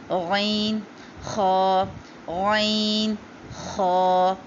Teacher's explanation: اب ان تینوں جگہ سے 2 حروف ادا ہوتے ہیں۔ جو ادنا حلق ہے یعنی کہ جو تھوڑی کے قریب کا حصہ ہے اس سے ادا ہوگا غین اور خا، دونوں میں خراش آئے گی